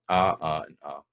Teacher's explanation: Then we've got the ah vowel, trap. So in a Scots accent, trap, bath, and palm all have the same sound for that.